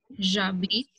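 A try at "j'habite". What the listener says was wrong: Jabit नहीं बोलना, z sound है, not j but z. j तो ये हो गया ना, j का साउंड.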